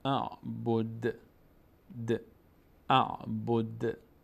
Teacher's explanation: دال مقداری در مخرجش مینرزه